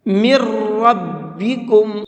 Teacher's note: اس کی وجہ یہ ہے کیونکہ اگر نون ساکن کے بعد را آ جاتا ہے تو وہاں پر پھر نون نہیں پڑھا جاتا ہے بلکہ نون کو را کے اندر مکس کر دیتے ہیں، پھر یہ را پڑھا جاتا ہے۔